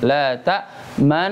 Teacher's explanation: dibaca dengan bacaan yang dari awal sampai terakhir dengungnya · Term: ismam